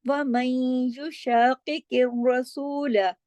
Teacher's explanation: वमन युशाकिकिर रसूल में आपने इदगाम नाकिस करना है। आवाज थोड़ी नाक में रहेगी, थोड़ी बाहर, और गुन्ना होगा।